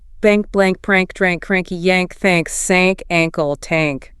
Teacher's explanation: The A in ank and ang words often takes on a longer, more nasal quality, almost like A.